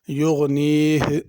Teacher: یغنیہ آخر میں ہا ظاہر کرنی ہے